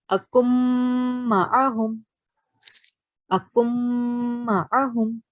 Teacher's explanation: 2-second nasal sound because there's mim mushaddad present over here. If there is noon mushaddad or mim mushaddad present after a noon sakin or tanween, you prolong the nasal sound for 2 seconds.